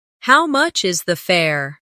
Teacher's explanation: The stress is on how much and fare. This makes it clear and easy to understand.